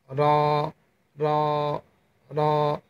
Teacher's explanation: এই মূর্ধার সাথে আপনার জিহ্বার আগাটা লাগিয়ে র হরফটি উচ্চারণ করবেন।